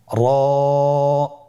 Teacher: জিহ্বার আগার উল্টা পিঠ তার বরাবর উপরে তালের সঙ্গে লাগিয়ে উচ্চারিত হয়